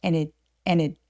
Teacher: 이유는 뭐냐면 and와 같이 접속사들은 문장에서 매우 중요한 키워드가 아니에요. 그래서 and라고 굳이 과하게 발음하지 않고 D 발음 없이 그냥 n 아주 가볍게 발음하도록 합니다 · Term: 연음